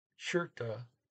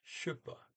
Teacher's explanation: SKJ is the harsher SH, or what's the normal SH from English, and whereas KJ is a little softer.